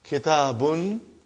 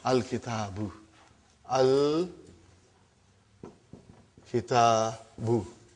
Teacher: Now you see, as soon as I put al, like a magic, one vowel sign got dropped. Instead of bun, it became bu.